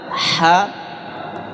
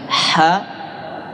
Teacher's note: Ha tenggorokan bagian tengah. Ha ya, ada pedasnya ya.